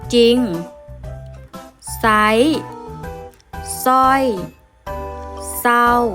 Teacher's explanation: พยัญชนะเรือจะไม่อ่านออกเสียงแต่จะอ่านออกเสียงเพียงพยัญชนะตัวหน้าเท่านั้น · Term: คำควบกล้ำไม่แท้